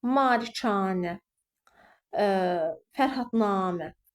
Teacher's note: anədə A, namədə A, yanədə A saitləri uzun tələffüz olunur